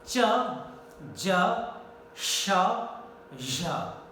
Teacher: These are palato-alveolar because the entire portion, front and mid part of the tongue, the tip, blade and front of the tongue, most part of the tongue goes against the entire upper palate. Upper palate starting from the teeth ridge, back of the teeth, it starts from there and goes to the entire hard palate.